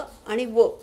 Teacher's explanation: य आणि व हे अर्ध स्वर आहेत यचा तसा कुठे स्पर्श होत नाही म्हणून त्याला अर्ध स्वर म्हटलेले विवृत मध्ये तोंड उघडाव लागत आ